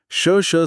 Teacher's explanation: श स बोलते समय सिर्फ हवा मुंह के अंदरूनी हिस्सों से रगड़ खाती है। वोकल कॉर्ड्स वाइब्रेट नहीं करते। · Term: अघोष